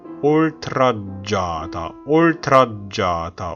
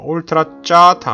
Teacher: G 두 개는 쌍지읒이 아니고 지읒을 두 번 발음하는 거예요. 유성음 G를 두 번 발음하는 겁니다.